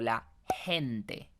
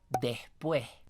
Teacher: en realidad es una S mucho más glotal o es una J o es una G mucho más glotal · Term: consonante glotal